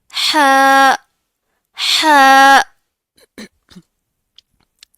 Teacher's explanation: इसका इखराज हलक के दरमियानी हिस्से से होता है। इसको बारीक आवाज में पढ़ना है बहुत सॉफ्टली।